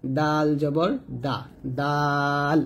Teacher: দেখুন ডালটা যখন উচ্চারণ করবেন জিহ্বাটা সামনের উপরে দুই দাঁতের গোড়ার সঙ্গে লাগাবেন, অর্থাৎ তা এবং তর মতো ডাল উচ্চারণ করবেন, ডাল জবর দা, ডাল এরকম।